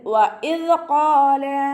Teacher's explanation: വഇദ് ഖാല എന്ന് ഉച്ചരിക്കരുത്. വഇദ് ഖാല ഖാഫ് ഇസ്തിഅലാന്റെ ലെറ്റർ ആണല്ലോ, ഉയർത്തി ഉച്ചരിക്കേണ്ട അക്ഷരങ്ങൾപ്പെട്ടതാണ്.